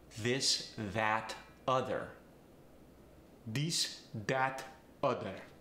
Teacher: A voiced TH gets the D sound. This, that, other.